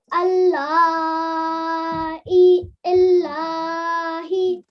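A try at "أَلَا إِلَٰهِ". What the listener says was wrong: Now what I want you to make sure is that and the lam stay separately. You're not joining them, right? So we have for 2 seconds and then lam for about 4 to 6 seconds. Ala illahi. Ala.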